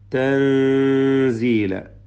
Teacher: സുഖം നൽകപ്പെട്ട നൂനിനെ ഇഖ്ഫാ ചെയ്ത് മറച്ചു മണിച്ചോതുക